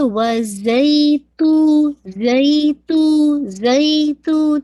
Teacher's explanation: زا ہے زال نہیں ہے تو ہلکی سی اس میں ویسلنگ ساؤنڈ اس کے اندر ہوگی